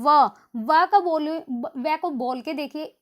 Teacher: होठ और दांत दोनों का यूज होता है, तो इसको हम दंतोष्ठ है बोलेंगे।